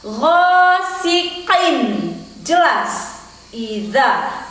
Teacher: Iza, karena hukum bacaannya adalah izhar saat tanwin bertemu dengan huruf alif.